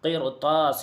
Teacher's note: قرطاس میں بھی را کو پر پڑھیں گے کیونکہ رائے ساکنہ کے بعد حروف مستعلیہ میں سے تا آ رہا ہے